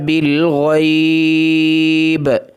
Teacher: با کے اوپر وقف کی صورت میں کلکلا ہوگا، اگر وقف نہیں کرنا تو پھر کلکلا نہیں ہوگا۔